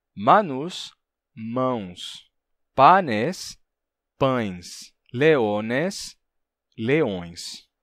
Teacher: palavra pães vem de panes aí vai acontecer a mesma coisa o n interválico vai cair deixando uma nasalidade vocálica